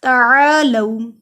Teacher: عین حلق کے درمیانی حصے سے ادا ہوتا ہے